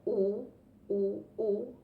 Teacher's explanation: es una semi vocal o una semi consonante es velar se usa la lengua y el velo del paladar